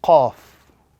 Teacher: the pronunciation of this letter this letter is pronounced when the the root of the tongue touches the upper palate at the very back of the throat · the root of the tongue or the back end of the tongue touching the palate at the back end of the throat gives us the sound Qaf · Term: the letter Qaf